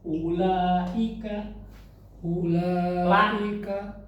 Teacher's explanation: Wajib muttasil sudah ditentukan sebanyak lima harakat panjangnya. Enggak boleh lebih.